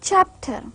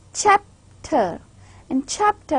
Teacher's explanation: when we say chapter the first part chap is more stressed and more clear and more loud